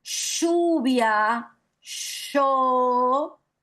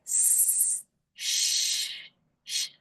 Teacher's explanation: un fono fricativo solamente que postalveolar, mientras que la s sería un fricativo alveolar.